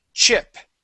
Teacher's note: that ch sound, it's a burst of air, and then we stop the air